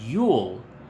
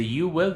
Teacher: la l es bien larga y bien redonda en el inglés